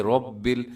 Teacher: جب را کے اوپر کوئی حرکت ہوتی ہے را موٹی ہوتی ہے، رب ایسے منہ بھر کے آپ نے اس کو پڑھنا ہے۔